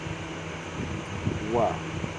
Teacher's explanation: वह दंत और होष्ठ को मिलाकर बोला जाता है वाह। आप लोग इसको दांत और होष्ठों के द्वारा प्रोनाउंस करेंगे।